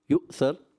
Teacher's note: ہماری روایت میں یؤثر، حمزہ کو جھٹکا دے کے پڑھیں گے